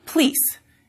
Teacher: For some speakers, the word police becomes pleece, as that vowel gets deleted and you get a consonant cluster, PL, police, in the front.